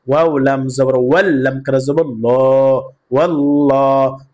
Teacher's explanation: লামকে পুর করে পড়তে হবে, অর্থাৎ মোটা করে পড়তে হবে। ওয়াল্লাহু, ওয়াও লাম জবর ওয়াল, লাম কারা জবর ল, ওয়াল্লাহ, হা পেশ হু, ওয়াল্লাহু।